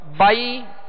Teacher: بائی نرمی کے ساتھ بغیر کھینچے بغیر جھٹکا دیے معروف پڑھنے ہیں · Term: یا لین